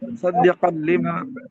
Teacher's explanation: तनवीन के बाद लाम आ गया। यहाँ पर गुन्ना नहीं, इदगाम कर देंगे बस। सद्दिक़ लिमा, लाम हर्फ यरमलू में से।